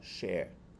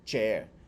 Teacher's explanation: têm a mesma pronúncia enquanto no inglês Elas têm pronúncias diferentes o SH ele tem um som de sh como do português mas o ch em inglês tem um som de T